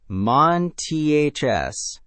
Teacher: Feel your tongue move from the N position, straight into the TH position between your teeth, straight into the S position. No vowel sound sneaking in between.